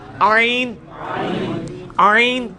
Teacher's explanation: ہا کا مخرج جو ہے نا یعنی وسط حلق, ادھر ہی سے یہ آئین بھی نکلنا ہے